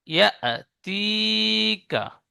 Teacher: ইয়া সাকিনের ডান দিকে জের এসেছে, একে ইয়া মাদ্দা বলে। ইয়া মাদ্দা এক আলিফ পরিমাণ টান দিয়ে পড়তে হয়।